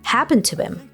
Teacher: him drops the H sound and connects to the previous word.